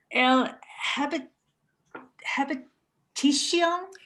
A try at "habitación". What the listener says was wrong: okay, and now you want to take that word, get rid of the H. Habitación. Sion.